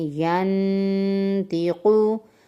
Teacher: نون ساکن کے بعد حروف ہلکی کے علاوہ کوئی حرف ہے تو یہاں پر ہم نے غنہ کیا ہے